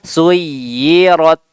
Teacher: huruf ta tidak memiliki sifat sofir. Ya, huruf ta hanya dia mengeluarkan angin saja sedikit. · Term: hams